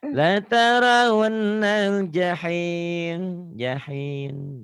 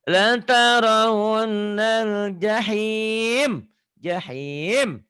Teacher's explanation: M-nya nggak sempurna pengucapan di sini. Bibirnya kurang mingkem. Ibarat mohon maaf, kalau kasur itu pernya udah nggak ini lagi, udah nggak membel, nggak cepat nutupnya.